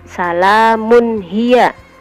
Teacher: Jadi tanwinnya harus dibaca jelas karena sesudahnya ada huruf ijhar yaitu ha